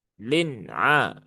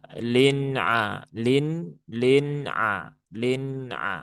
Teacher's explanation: Nun sukun itu sifatnya sama seperti lam di ayat yang pertama. Sifatnya adalah tawas. Maka jangan ditekan walayalin lin a.